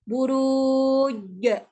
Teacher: Yang pertama jim, dia mesti melekat, tak akan menghasilkan bunyi angin. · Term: qalqalah